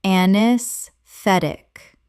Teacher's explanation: Correct pronunciation, anesthetic. The AE at the start is silent, and the stress falls on the third syllable.